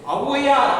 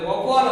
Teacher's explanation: பாத்தீங்க அப்படின்னா ஔவையா, ஒரு ஔவையார் அப்படிங்கிற சொல்லில வரும் பொழுது, ஒவ்வால் அப்படிங்கிற சொல்லில வரும் பொழுது தனக்குரிய மாத்திரை அளவில் இருந்து அரை மாத்திரை அளவு குறைந்து 1/2 மாத்திரை அளவாக நம்ம ஒலிக்குது